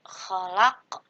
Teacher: huruf qaf yang berharokat tapi disukunkan dan dipantulkan cara bacanya. Disebut dengan qalqalah kubro.